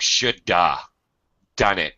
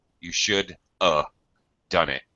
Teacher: Sounds like shoulda done it because of the D in done. So have gets reduced to simply a schwa sound.